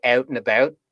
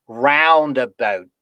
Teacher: you've got the ow vowel followed by a voiceless stop